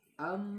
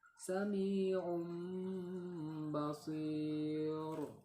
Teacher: Iqlab ialah apabila huruf nun mati atau tanwin bertemu dengan huruf ba, bunyinya menjadi mim mati, dengan catatan memelihara ikhfanya mim sukun ke dalam huruf ba dengan disertai tempo dengung atau gunnah 2 harokat.